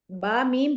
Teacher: बा मीम दो होट मिलने से अदा होंगे